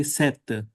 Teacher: in modern French, they don't pronounce p, they simply say sept for seven